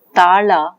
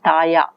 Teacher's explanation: La is retroflex lateral is replaced by the semi-vowel ya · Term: gliding